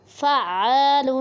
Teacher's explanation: فا عین زبر فا، عین الف زبر ع، فع، لام دو پیش لن، فعال۔ عین کو ہم سختی سے پڑھیں گے کیونکہ یہ ایک مشدد حرف ہے